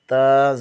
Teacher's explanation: زبان کی نوک ثنائے علیہ کی جڑ سے لگے تو تا ادا ہوتا ہے